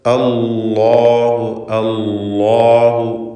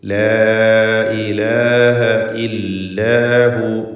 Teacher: അള്ളാഹു എന്ന ഇസ്മുൽ ജലാലയിലെ ലാമിനെ തഫ്ഖീം ചെയ്യണം, തടിപ്പിക്കണം എന്നത് ശ്രദ്ധിക്കുക.